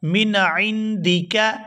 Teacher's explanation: عین کو حلق سے اچھی طرح سے ادا کیا جائے گا